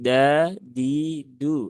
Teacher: tidak keluar udara gitu kan dia di ee ujung lidah di sekitaran gusi ya di sekitaran gusi ya menjadi da di du ahah seperti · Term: huruf Dal